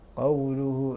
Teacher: القاف من حروف الاستعلاء مفخم مرتبه تفخيمه هنا في المفتوح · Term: التفخيم